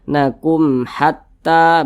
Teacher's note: Ini mim sukun, setelahnya huruf H, bukan huruf ba, bukan huruf mim. Nah, maka hukumnya adalah izhar syafawi karena dia izhar dibaca jelas, tidak berdengung.